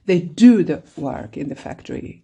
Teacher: When you say do, you are going to stress it. You are going to show that you are putting emphasis.